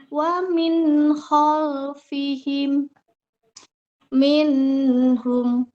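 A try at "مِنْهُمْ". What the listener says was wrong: Jangan banyak-banyak. Nunnya satu anggota saja. Minhum. Tadi kebanyakan ya ngalirnya.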